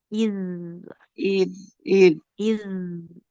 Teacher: kalau zal itu tidak disertai dengan aliran nafas